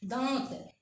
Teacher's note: जैसे दांत लिखा हुआ उच्चारण करेंगे तो दांत मुंह से भी और नाक से भी ये चंद्रबिंदु उच्चारण निकल के आता है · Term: अनुनासिक